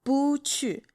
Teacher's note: bu is the fourth tone, but when it's followed by another fourth tone, it turns to the second tone